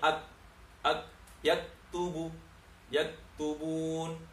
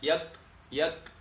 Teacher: kalau sukun ki lebih jelas hamsnya, dia biasa tidak hamskan, tidak ada desisnya, sehingga bunyinya ak, yaktubun.